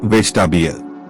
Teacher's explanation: The middle E is not clearly spoken. It sounds like vegetable.